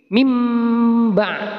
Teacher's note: Nah, nunnya tidak terbaca kan. Inilah bacaan iqlab mim. · Cara membacanya adalah merubah bunyi nun sukun atau tanwin menjadi bunyi mim. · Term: bacaan iklab